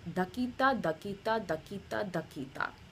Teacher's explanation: So da, da with an aspiration, ki, and then da. And make sure, again, your T is far forward, even your D is far forward.